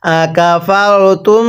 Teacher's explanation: মিম সাকিনের পরে বা থাকলে মিম সাকিন গুন্না করে পড়তে হয়